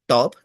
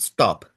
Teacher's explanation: top is an aspirated T, stop is an unaspirated T